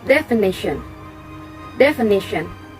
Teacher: The stress is located on the third syllable